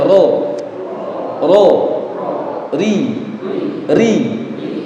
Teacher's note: getarannya roh itu cuma dua